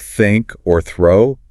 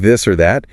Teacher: For a word like think or throw, it's just air. For words like this or that, you add your voice, you can feel it vibrate.